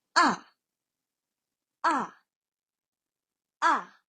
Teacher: Fourth tone. The fourth tone is a falling tone.